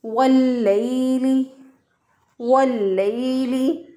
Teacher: हम इसको पढ़ेंगे वल्लैली, वल्लैली, लाम ज़बर या लई, ये या लीन है, या साकिन से पहले वाले हरफ पर ज़बर हो तो या लीन होती है। या लीन को हम लंबा नहीं करते, नरमी से, आसानी से, जल्दी से अदा करते हैं। · लाम के ऊपर जो शद है इसको पीछे वाले वाव के साथ मिलाया तो अलिफ पढ़ने में नहीं आएगा।